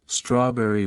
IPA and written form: ˈstrɔːˌbɛri (strawberry)